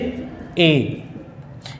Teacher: ए और ऐ, इन दो वर्णों का जो उच्चारण स्थान है वो कंठ तालु है